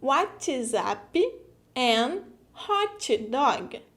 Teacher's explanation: We always manage to put a vogal in the final of the syllable if it finishes with a consonant.